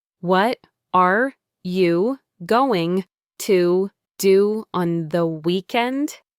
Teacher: The English you learned in school is often what we call citation form. Each word is pronounced perfectly and separately, as if it were an item on a list.